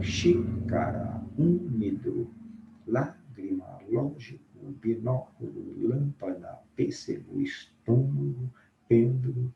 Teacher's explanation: Proparoxítonos. Acento tônico na antepenúltima sílaba.